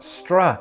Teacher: When I do this, my tongue glides between what's known as the alveolar ridge, where the S and T are articulated, to the post-alveolar position, where the R is articulated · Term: S backing